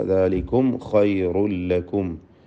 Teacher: സാക്കിനത മീമിനെ ഇൽഹാർ ഷഫവി മണിക്കാതെ വെളിവാക്കുക · ദാലികും ഖൈറുൽ ലക്കും. ഖൈർ ഖായിന് തഫ്ഖീം, റായിനും തഫ്ഖീം. ഖൈറുൽ ലക്കും തൻവീനിനെ പൂർണ്ണമായും ലാമിൽ ലയിപ്പിച്ച് ഇദ്ഗാം ചെയ്യാതെ മണിക്കാതെ ഉച്ചരിക്കുക.